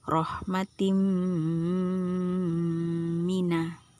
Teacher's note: bunyi tanwin itu dileburkan dimasukkan ke huruf mim sambil dilagukan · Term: idgham bighhunnah